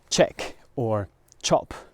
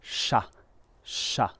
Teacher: when you have a ch in English you say ch with a hard attack, a hard start to the word